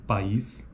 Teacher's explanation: em sequências de vogais como na palavra país cada uma das vogais tem proeminência acentual constituindo pico de sílaba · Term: sequência de vogais